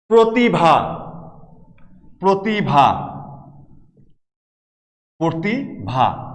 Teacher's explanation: কিংবা ধরো প্রতিভা, প্রতিভা, প্রতিভা, এখানে ই ধ্বনি আছে এবং পূর্ববর্তী অধ্বনির সাথে রফলা আছে, এই কারণে উচ্চারণটা হয়ে গেল ওকার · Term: সংবৃত উচ্চারণ